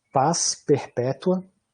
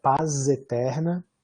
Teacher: então nesse caso o último som da palavra paz vai ser desvozeado, mas se eu dizer paz eterna, ele vai ser um som vozeado, vai ser um Z